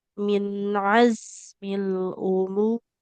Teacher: ada huruf za yang harus dialirkan suaranya.